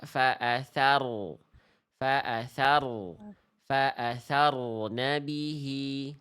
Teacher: huruf ro memang getarannya tidak boleh berlebihan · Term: takrir